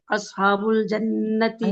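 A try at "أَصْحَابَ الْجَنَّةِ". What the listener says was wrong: नहीं नहीं असहाब नहीं कहेंगे असहाबा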